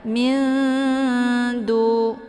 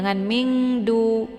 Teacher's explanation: Nun posisinya di ujung lidah, dal juga posisinya di ujung lidah. Maka ini dinamakan dengan ikhfa a'la atau ikhfa aqrab ya, dekat makhrajnya.